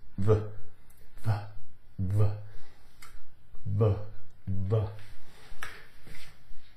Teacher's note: the lower lip the upper teeth v v gives you the V sound